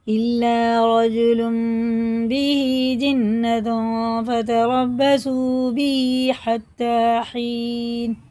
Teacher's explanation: اس نون کی آواز کو جو تنوین میں ہوتی ہے نا ناک میں چھپائیں گے، اخفا کر کے پڑھیں گے